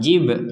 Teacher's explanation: Baknya ini harus dipantulkan. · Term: pantulan